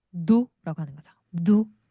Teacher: 마지막 S 발음 안 하고요